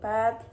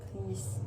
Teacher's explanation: the aspirated p in pet versus the unaspirated p in please